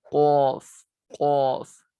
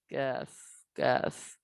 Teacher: قاف حروف لہویہ، زبان کی جڑ اور تالو کے نرم حصے سے ادا ہوتا ہے۔ کاف زبان کی جڑ اور تالو کے سخت حصے سے ادا ہوتا ہے۔